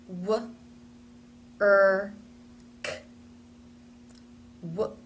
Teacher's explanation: the first sound in these words is the W sound and notice that the lips do need to be in a tight Circle for that